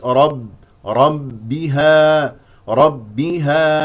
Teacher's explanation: باء ساكنه ثم باء مكسوره شديده مجهور لا يجري فيها النفس